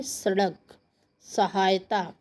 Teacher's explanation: जीभ का जो अगला पार्ट है वो दांतों को टच करेगा, छुएगा, इसलिए इसको दंत्य कहा गया है